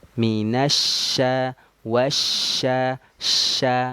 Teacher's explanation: Lihat perbedaannya antara huruf shin dan sin. Nah, kalau shin yang ada titik 3 itu sifatnya at-tafashi, menyebarnya angin di dalam mulut